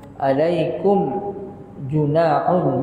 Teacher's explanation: mim mati bertemu dengan jim, izhar syafawi.